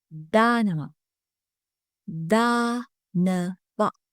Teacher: The first vowel sound is ah. It should be a long ah sound.